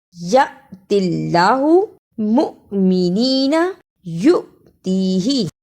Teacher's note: الف کے اوپر جزم ہو یا حمزہ کے اوپر جزم ہو، آواز ایک ہی رہے گی، یعنی ہم نے جھٹکا لگا کر پڑھنا ہے۔ یا زبر الف یا، میم پیش حمزہ مؤ، یا پیش حمزہ یو، یأتی اللہ مؤمنین یؤتیہ۔